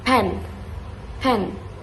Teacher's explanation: we also learn about aspirated consonants like the strong P sound in pen.